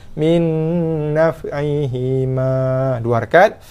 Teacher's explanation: kita akan waqafkan dengan hukum man asli 2 harakat lah, sebab ada huruf alif.